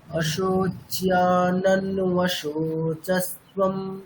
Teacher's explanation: নকারটা দুবারই উচ্চারণ করা হবে, যেহেতু যুক্তাক্ষরের প্রথম বর্ণ।